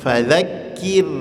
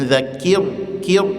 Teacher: Ro sukun sebelumnya baris bawah. Ini salah satu ro dibaca tipis.